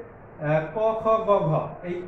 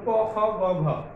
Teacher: আর পশ্চাৎ জিহ্বামূলীয় ধ্বনি হচ্ছে ক, খ, গ, ঘ। এইগুলোর ক্ষেত্রে দেখো যে জিহ্বার পশ্চাৎভাগ কোমল তালুকে স্পর্শ করে উচ্চারিত হচ্ছে, সেই জন্য একে হচ্ছে জিহ্বামূলীয় ধ্বনি বলে।